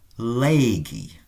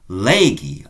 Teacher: In the past, legi, elongate the vowel